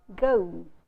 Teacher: this sound, which is really a diphthong in RP, is pronounced as a vowel sound in Indian English.